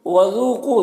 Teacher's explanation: ذال کو باریک پڑھنا ہے، واو مدہ ہے، 1 الف کے برابر کھینچیں گے۔ کو میں قوف کو حروف مستعلیہ میں سے پر پڑھیں گے اور واو مدہ ہے، 1 الف کے برابر کھینچیں گے۔